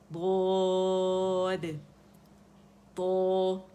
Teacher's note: دو موٹے کنارے جو زبان کے نا وہ اوپر داڑھوں کو لگیں گے. عقل داڑھ سے لگانا شروع کریں تو زبان کی جڑ بھی خود بخود اوپر جائے گی، ٹھیک ہے.